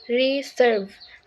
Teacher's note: in the word reserve the second syllable serve is stress not the first syllable re